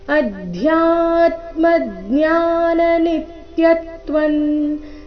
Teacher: ಚರಣ ಮತ್ತೊಮ್ಮೆ ಅಧ್ಯಾತ್ಮ ಇಲ್ಲಿ ಧ್ಯಾ ದ ಅಧಿಕ ಯ ಸಂಯುಕ್ತಕ್ಷರ ಅಧ್ಯಾ ಬೇಡ ಅಧ್ಯ ಮಹಾಪ್ರಾಣ ಸ್ಪಷ್ಟವಾಗಿ ಬರಬೇಕು